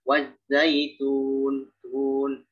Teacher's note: Jadi taknya itu ketika dhammah, tak dhammah ya, itu tidak terlalu dimonyongkan.